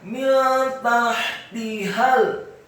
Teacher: Kata min tahtihal, mimnya dibaca kasrah 1 harokat, nun yang sukun bertemu dengan huruf ta. Hukum bacaannya adalah ikhfa, dibaca sama-sama. · Kemudian kata tahtihal, taknya dibaca tipis, fathah 1 harokat, ha-nya dibaca tipis, halus dan nyaring, dibaca sukun. Kemudian tak yang kedua dibaca tipis, kasrah 1 harokat, dan ha yang kedua dibaca tafkhim tebal, fathah Cukup satu harokat karena setelahnya langsung disambung ke huruf lam yang sukun.